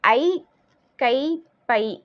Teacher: ஐ, கை, பை என ஐகார எழுத்து தனித்து வரும் இடங்களை வந்து தனக்குரிய 2 மாத்திரை அளவில் ஒலிக்கும். ஏன்னா இதெல்லாம் நெடில் எழுத்து தானே, ஐன்றது நெடில் எழுத்து.